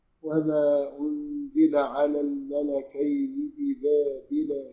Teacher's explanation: عند الاخفاء النون ما بتظهرش ما بتظهرش انما يظهر الصفه بتاعتها اللي هي الغنه بتاعتها